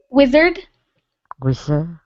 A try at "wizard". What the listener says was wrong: yes but make sure you pronounce the d on the end